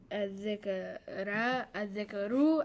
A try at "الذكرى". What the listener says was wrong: No. You're changing a letter. We can't change a letter. We can only change a sound. Point is, this has the same ending as Musa. That's right. Non-flexible. When you see an alif ending or alif maqsura ending, it's